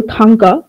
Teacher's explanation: thang, the first syllable, it is stressed, and the second syllable, ka, it is not stressed